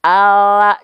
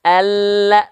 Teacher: kalau huruf l ala cuman bagian ujung akhir lidah saja tapi kalau huruf lam Alla dia nampak lebih penuhnya nempel